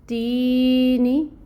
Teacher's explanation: یا ساکن ہے اور یا ساکن سے پہلے زیر کی حرکت ہے، تو تی یا مد 2 حرکت کے برابر 2 کاؤنٹس لمبی ہوگی۔ نی نون کے نیچے کسرہ کی حرکت ہے، 1 کاؤنٹ پڑھا جائے گا۔